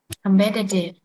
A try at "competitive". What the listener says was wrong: Competitive. Cái ca và cái bờ của chị á, nó không có bật ra, nó phải đẩy hơi tại vì á, những cái âm mà không rung và những âm này nè, em phải kiếm phát thanh sạch sẽ nè. Competitive.